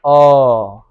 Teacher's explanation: नहीं स्पर्श कर रहा है ओठ भी नहीं सट रहा है वो आवाज डायरेक्ट कहां से आ रहा है कंठ से · और उसमें कोई अंग भाग नहीं लेता, जैसे अ, बिल्कुल मुंह खुला हुआ, जीभ साइलेंट है, दांत भी नहीं स्पर्श कर रहा है, ओठ भी नहीं सट रहा है